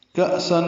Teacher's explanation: کأسن میں حمزہ ساکن جھٹکے سے پڑھا جائے گا